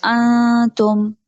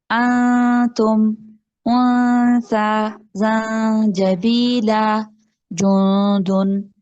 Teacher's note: हमने यहाँ पर इख्फा करना है, नून को आगे ता में छुपाना है। देखिए नून में जो गुन्ना हो रहा है ना मेरा, उसमें साउंड आ रही है थोड़ी सी अगले हर्फ की।